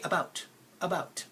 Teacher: where do I feel or see the schwa in this word it's in the first syllable right about now the bout part my mouth should be doing · the bout part, my mouth should be doing more effort or taking more effort to say the bout part compared to the a part.